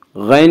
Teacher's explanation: غین کو پر پڑھیں گے، غین حروف مستعلیہ میں سے ہے